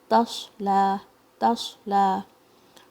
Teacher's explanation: सद भारी और सद में सफीर भी है थोड़ी मगर ज्यादा नहीं और इसकी साउंड भारी भी है · صاد بھاری اور صاد میں صفیر بھی ہے تھوڑی مگر زیادہ نہیں اور اس کی ساؤنڈ بھاری بھی ہے اور جو ہے آپ نے اس کو شیک کرے بغیر پڑھنا ہے.